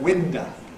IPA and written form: ˈwɪndə (window)